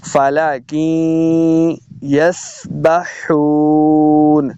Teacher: واو مدہ ہو رہا ہے، یہاں پہ دو حرکات اس کو لمبا کر کے پڑھنا ہے